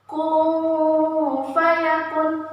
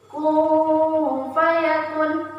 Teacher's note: Nah, pada kalimat kun fayakun terdapat nun sukun bertemu dengan huruf fa. Jadi nun sukun bertemu dengan fa dibaca samar. Kun fayakun, samar, samar, samar yang sungguh-sungguh. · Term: ikhfa hakiki